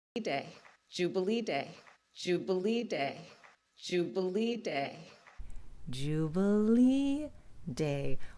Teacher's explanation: hit that high syllable lee and then she's going to go back down for day